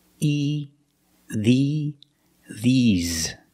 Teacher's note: But when I say these for something plural, these, I use the long E, like green beans. The mouth is more closed. And you smile a little bit.